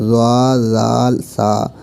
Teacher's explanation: زبان کا سرا اور اوپر کے دانتوں کے اندرونی کنارے سے ادا ہوتے ہیں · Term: حروف لثویہ